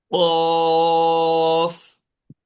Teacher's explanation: خ हाँ, आप लोग इसको महसूस कर सकते हैं कि आपकी जबान का पिछला हिस्सा ऊपर लग रहा है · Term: कॉफ